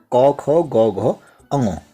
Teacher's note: गले से बोले जाने वाले वर्ण क और ख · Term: कंठ ध्वनियां